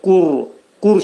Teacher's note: qaf hərfinin məxrəci dilin sonu və dilçəyin başlanğıcındadır